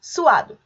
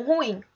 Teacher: vocálicos nós temos o hiato o que que é o hiato é o encontro de dois sons vocálicos também mas dessa vez esses sons eles estão em sílabas diferentes